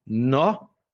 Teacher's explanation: E o que tá fazendo aqui, tá fazendo aqui, eh, no lá no em Minas Gerais, eles pegam muito a palavra, a sílaba tônica da palavra, enfatizam a sílaba tônica e desaparecem com o resto. Então, nossa, o é mais fraco, então vai embora, fica nó